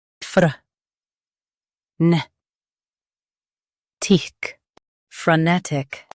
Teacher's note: Emphasize ne and keep tick quick.